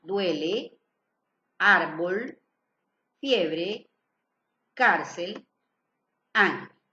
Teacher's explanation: Palabras graves. Llevan el acento en la penúltima sílaba.